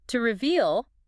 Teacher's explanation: To reveal, stress on the second syllable, means to show something that was hidden.